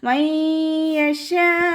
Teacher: നൂൻ സാക്കിനയെ യായിലേക്ക് ലയിപ്പിച്ച് ഉന്നയോടുകൂടി ഓതാൻ ശ്രദ്ധിക്കുക. നൂനിൻ്റെ സൗണ്ടിനെ അവിടെ കേൾക്കൂല, പൂർണ്ണമായിട്ട് അതിലേക്ക് ലയിപ്പിച്ചു കൊടുക്കുക കേട്ടോ.